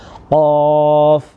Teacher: اس کو ہم نے زبان کی جڑ کو اٹھانا ہوتا ہے اور تالو کا نرم حصہ استعمال کرنا ہوتا ہے